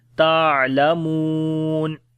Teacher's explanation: واو مدہ ہے اور جب یہاں پر رکیں گے تو مد عارض ہو جاتی ہے، جو کہ 2 سے 3 سیکنڈ اس کو لمبا کرتے ہیں